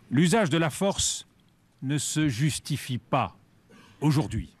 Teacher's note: Sa voix est assurée, sa prosodie est composée de phrases assez courtes et ses mélodies vont souvent de l'aigu vers le grave, ce qui est l'empreinte d'une affirmation nette